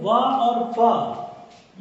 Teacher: इसी के साथ साथ दंत्योष्ठ, दंत्योष्ठ की बात करें, ये ऊपरी दांत आप देख रहे हैं, ये नीचे का होठ देख रहे हैं, तो ये दोनों से उच्चारण होने वाला जो होगा वो दंत्योष्ठ होगा